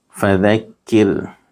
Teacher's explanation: را ساکن سے پہلے زیر ہے اس لیے را باریک ہوگی